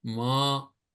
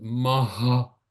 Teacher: visarga is more you're pushing air out